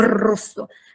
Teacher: Cosa succede alla nostra lingua quando diciamo rosso si agita tutta la lingua come un uccellino in gabbia